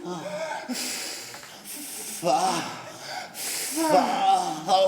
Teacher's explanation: Et l'F, en appuyant les dents d'en haut sur la lèvre de dessous.